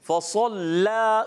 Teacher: लाम को मोटा नहीं करना, फ़सल्ला सौद मोटा, लाम बारीक